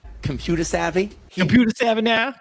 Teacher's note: Drops the final R sound, saying computer as computer. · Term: non-rhotic accents